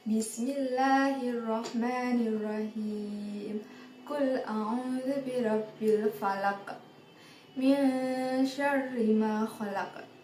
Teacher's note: ada pantulan di huruf qof kan? Itu yang disebut dengan qalqalah.